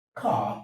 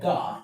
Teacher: ka is a voiceless velaric plosive, while ga is a voiced velaric plosive. However, the focus should be on whether this is voiced or voiceless.